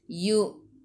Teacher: Mematikan dengan huruf nun. Hujung lidah menyentuh gusi atas. · Yu hamzah baris sukun. Kena baca dengan putus. Yu'minun. Sebelum huruf akhir ada waw yang tak ada baris ma'ril sukun.